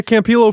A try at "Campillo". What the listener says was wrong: L's are silent.